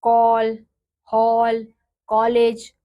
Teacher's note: ध्वनि अंग्रेजी के अक्षरों में इस ध्वनि का प्रयोग होता है यह आ और ओ के बीच की ध्वनि है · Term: औ की ध्वनि